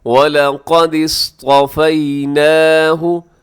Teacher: آگے دیکھیے گا وَلَقَدِ اصْطَفَيْنَاهُ، قاف موٹا پڑا جائے گا اور آگے صاد موٹا ہے